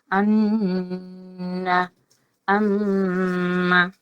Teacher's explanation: নাকের বাঁশি থেকে গুন্না উচ্চারিত হয় অর্থাৎ নাসিকা থেকে আন এরকম পড়েছি ঠিক ওই জিনিসটা এখানে হবে